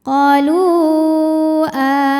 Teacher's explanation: sukun didahului damah pada kata qolu hamzahnya a pada kata amanna maka lam dipanjangkan boleh empat boleh lima harakat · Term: Mad Jaiz munfasil